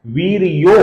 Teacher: यहां पर महाबुद्धि के विसर्ग के आगे म आने के कारण विसर्ग का यहां पर र हुआ है। महावीर्य का जो विसर्ग है, इसके आगे भी म आने के कारण इसका भी ओ हुआ है, मतलब वीर्यो हुआ है।